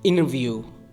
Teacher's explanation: T and N are so close in the mouth that the T can be disappeared